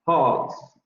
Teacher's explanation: Notice that the plural of pods ends with a voiced alveolar fricative.